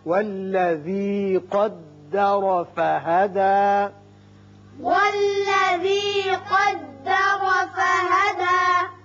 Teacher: قدر قاف پر پڑھیں گے، را بھی پر ہوگا اس لیے کہ اوپر زبر ہے۔